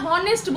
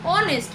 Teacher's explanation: when we pronounce honest the H is silent